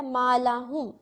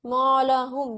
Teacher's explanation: میم ایک موٹا لیٹر نہیں ہے، تو اب آپ اس کو مو نہیں پڑھیں گے، مولاہم، یہ غلطی ہو جائے گی. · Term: باریک پڑھیں